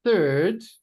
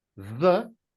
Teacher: With third, 10th, and Thursday, the TH is a soft sound. It's just air coming through my teeth. Whereas with the, there's a vibration in the sound. It's a stronger sound.